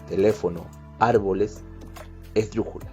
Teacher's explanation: Es aquella palabra en que la mayor fuerza de voz recae en la antepenúltima sílaba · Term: palabras esdrújulas